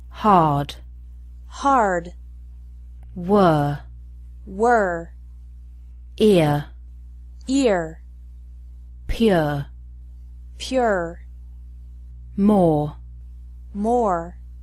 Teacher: The R is pronounced stronger in American English.